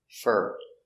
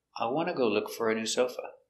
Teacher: For is pronounced fur when it's not stressed. And it's not stressed here.